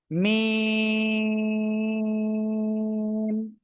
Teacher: মিম [music] মিম চার আলিফটা নিয়ে উচ্চারণ করবো কোন জায়গা থেকে উচ্চারিত হবে এই যে দুই ঠোট দুই ঠোঁটের বাইরের অংশ থেকে